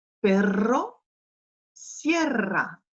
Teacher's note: En début de mot, il est roulé très fort.